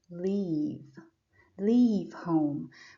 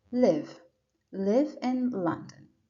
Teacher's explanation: when we have l e a v e it's pronounced longer leave leave home but when we have l-i-v-e it's pronounced shorter